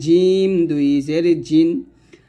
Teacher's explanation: জিম হলো জিহ্বার মধ্যখান তার বরাবর উপরের সঙ্গে লাগবে